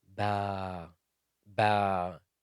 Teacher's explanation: But alif with the letter ba is light. Ba, ba, it's light.